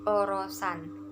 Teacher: U besarnya itu lebih condong ke O